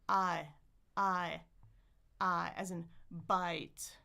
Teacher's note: It's very very small. I I I my jaw is closing at the same time as my tongue is moving forward.